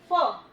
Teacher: जो ऊपर वाला टीथ है हमारा वो हमारे नीचे वाले होठ पर टच करेगा और फिर आवाज निकलेगी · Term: नुक्ते वाले फ